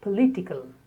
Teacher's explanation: the letter O is spoken as a because the stress is on the second syllable